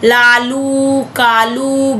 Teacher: जीभ के दोनों ओर से हवा निकलती है। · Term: पार्श्व व्यंजन